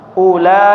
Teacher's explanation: Panjangnya 4 atau 5 harokat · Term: mad muttasil